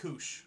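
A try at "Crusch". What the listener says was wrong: There's an R in there.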